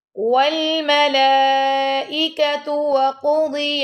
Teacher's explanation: والملائكة ای کر کے پڑھنا، آپ اے نہیں پڑھنا. والملائكة وقضي القاف کو اور دوال کو دونوں کو موٹا پڑھنا آپ نے.